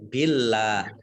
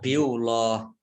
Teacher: Allahnya dibaca tipis karena harokat di depannya kasroh ya.